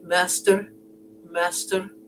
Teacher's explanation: master has a slender r so it would be master master and